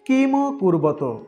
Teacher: এখানে ম এবং ত এর উচ্চারণ ম এবং ত, অর্থাৎ ময়ের সাথে একটি অ এবং তয়ের সাথে একটি অ রয়েছে। কোনো বর্ণের শেষে হস চিহ্ন না থাকলে সেখানে অ উচ্চারণ থাকবে।